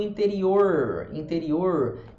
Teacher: R do interior, interior, que a língua enrola para trás